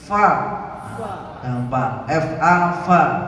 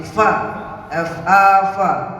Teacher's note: fa ini bibir bawah bagian dalam mengenai ujung gigi sari.